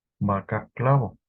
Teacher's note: la a acentuada fue predominantemente de timbre medio